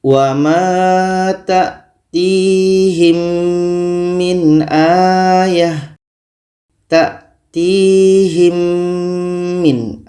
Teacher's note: kita dengungkan dengungnya dua harkat · sudah otomatis sudah masuk mim ini ke mim yang kedua dan tinggal kita dengungkan saja kita baca w tatihim min aah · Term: idgham syafawi